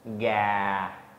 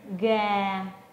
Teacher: When at the starting point, instead of starting at the mid-level, you slightly lower it a little bit lower than mid-level tone. And then during your speech and pronunciation, you lower your voice. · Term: low falling tone